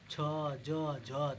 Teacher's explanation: मुख इस प्रकार बोलते हैं कि हवा स्थानों को कुछ रगड़ती हुई महसूस करती है जैसे च ज झ तो नहीं लग रहा है कि वॉइस मेरे मुंह से निकल रही है तो थोड़ा रगड़ती हुई जा रही है उसे को स्पर्शी व्यंजन मतलब अस्पर्शी मतलब कि स्पर्श करते हुए गला को स्पर्श करते हुए निकले भाषा उसे हम स्पर्शी व्यंजन कहते हैं। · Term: संघर्षी व्यंजन